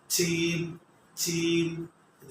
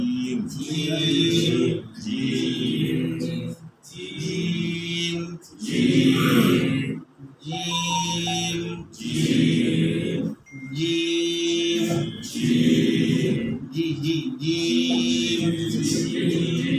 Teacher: ঠিক জিহ্বার মধ্যখান উপরের তালুর সাথে লেগে থাকবে। জিম, একটু শক্ত করে জিম জিম জিম জিম জিম জিম জি জি জিম।